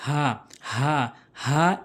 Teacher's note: এই 2টি হরফ হলকের শুরু থেকে উচ্চারণ হয় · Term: হামজা